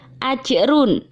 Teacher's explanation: dhommatain yang bertemu dengan huruf lain ini dinamakan bacaan idhar halqi cara membacanya harus dengan jelas